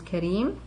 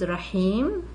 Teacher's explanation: inserting a long vowel in the middle of the word. So it's in the case of the first two words, it's a ya, and the last two words, it's an alif.